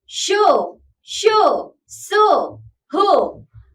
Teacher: ऊष्म व्यंजन यानी सिबिल consonant इन व्यंजनों के उच्चारण में वायु तेज गति से मुंह के भागों से रगड़ खाती हुई बाहर निकलती है